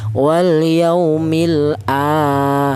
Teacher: Kemudian di sini ada a, yaitu ada hamzah berharokat berdiri, ini dibaca panjang, yaitu satu alif atau dua harokat atau dua ketukan